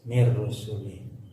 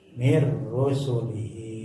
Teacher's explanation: Mir rusuli kalau berhenti jadi pendek li. Kalau diteruskan i-nya panjang.